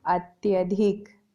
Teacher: ई और आ मिलकर के या में परिवर्तित हो गए और हमारा शब्द बना अत्यधिक। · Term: यण संधि